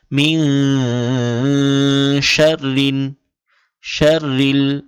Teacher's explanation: এটা মিন, এখন মিং পড়তে হবে, ম রসিকার মি অনস্বর মিং, এভাবে। এবং এই মিং বলে আওয়াজ আটকে রাখতে হবে, গুণনা করতে হবে। মিন শাররিন, শাররিল, এখানে শিন এই র এই ওয়াওকে ধরেছে। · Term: ইখফার গুণনা